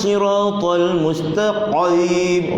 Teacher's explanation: Pangkal lidah, dia tak sampai pada kerongkong, pangkal lidah saja. Jangan dalam sangat. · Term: huruf qaf